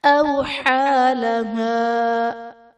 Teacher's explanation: أَوْحَى لَهَا، أَوْحَى لَهَا میں واو ساکن سے پہلے حرف پر زبر ہے تو یہاں پر واو لین کا قاعدہ ہے، حا پر کھڑا زبر ہے جو کہ الف مدہ کے قائم مقام ہے، اس لیے اسے ایک الف یعنی دو حرکات کے برابر کھینچ کر پڑھیں گے